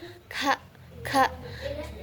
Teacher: cara keluarnya itu infijari adanya letupan. K ka posisi posisi dalam pita suaranya itu mahmus tidak bersuara.